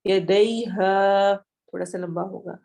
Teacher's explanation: ہا میں الف مدہ ہو رہا ہے تو ہم اس کو تھوڑا سا لمبا کریں گے، یدیہا نہیں پڑھیں گے، یدیہا تھوڑا سا لمبا ہوگا.